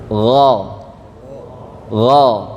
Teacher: huruf ghain tidak ada anginnya atau namanya jahur